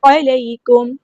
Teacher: میم ساکن پر دیکھیں اظہار شفوی ہوئے، ہم نے یہاں پہ ٹائم نہیں دینا